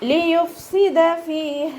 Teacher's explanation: ലിയുഫ്സിദ ഫീഹ, ഫ ലൈറ്റ് ആക്കിയിട്ട് ഉച്ചരിക്കുക. മേലെ മുൻപല്ലിൻ്റെ അറ്റം താഴെ ചുണ്ടിൻ്റെ ഉൾവശത്ത് നനഞ്ഞ ഭാഗത്ത് വെക്കുക കേട്ടോ.